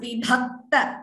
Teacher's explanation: Vibhakta bh is mahaprana.